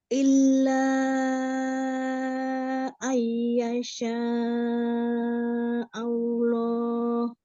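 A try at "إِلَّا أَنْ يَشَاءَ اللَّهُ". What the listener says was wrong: Jangan terlalu ditekan lam ya. Illa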